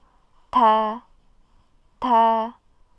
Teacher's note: Ta ini punya sifat keluar nafas. Jadi ketika kita nanti mengucapkan huruf ta, itu ada nafas yang keluar.